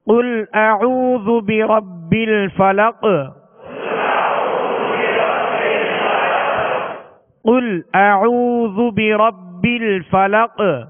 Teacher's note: اسی طرح برب الفلق، تو قاف آخر میں اس پر ہم نے وقف کیا، تو وقف کی صورت میں یہ ساکن ہوگا اور اس پر قلقلہ ہوگا، یعنی آواز میں جنبش ہوگی، آواز لوٹتی ہوئی آئے گی